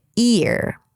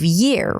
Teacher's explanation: the tongue wants to take the shortcut and just make an E sound, ear, instead of year, right? You're just trying to be efficient. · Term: y sound